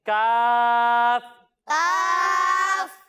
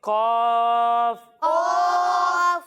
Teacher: حروف مستعلیہ میں سے ہے، یعنی ان حروف میں سے ہے جن کو موٹا پڑھنا ضروری ہے، تو اسے ہم موٹا کر کر پڑھیں گے۔